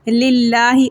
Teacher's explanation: اللہ کے لام کو باریک پڑھیں گے